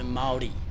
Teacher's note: You say the rolled R like a D